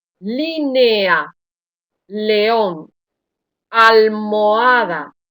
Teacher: nota que estas vocales fuertes no se agrupan